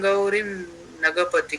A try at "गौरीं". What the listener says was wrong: गौरीम है ना वो, मैं 3 बार बता चुका, गौरीम। ई बोलो, ई ई हाँ, अब ये ई वहां लगाओ, फिर बोलो